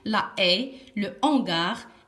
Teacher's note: quelquefois on ne fait pas la liaison ça veut dire c'est 1 h aspiré